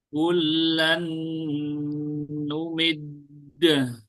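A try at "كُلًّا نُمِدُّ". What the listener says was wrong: Jangan sampai berharokat fathah. Kullan numid. Numid.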